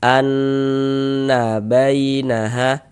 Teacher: Jadi dighunahkan tuh didengungkan. Jadi di bagian annya itu suaranya itu kita tahan ya kita panjangkan sejenak sepanjang dua harakat. Anna bainaha nanya pendek jangan dibaca anna. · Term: ghunah musyaddadah